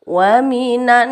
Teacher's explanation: Wa minan panjang sedikit saja, panjangnya numpang lewat.